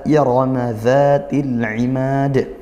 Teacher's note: Ra-nya tafkhim karena dia ditebalkan ya, karena ra-nya fathah. Zati, za dibaca panjang 1 alif atau 2 harokat seperti itu.